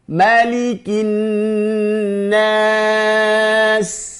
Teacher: Nun juga bertasydid, ada gunnahnya. Ditahan.